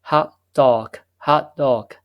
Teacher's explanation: the t- sound could be simply not pronounced